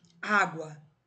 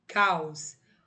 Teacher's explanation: Caos, o O aqui tá apoiado no A. Então, ele é representado pelo esse fonema W e eles estão formando uma única sílaba, sendo uma semivogal